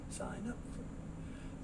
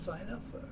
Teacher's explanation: The N sound moves over, so you get sign up for.